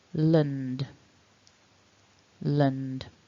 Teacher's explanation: the syllable are the and then and the d so and that should have vibration in both the nose and then the throat